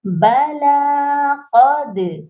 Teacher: قاف موٹا ہوگا اور دال پر قلقلہ کریں گے